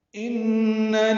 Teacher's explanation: ان میں نون مشدد پہ غنہ ہے